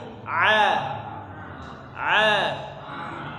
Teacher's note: huruf Ain ya ditenggorokkan bagian tengah